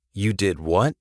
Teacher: Rising intonation to show surprise.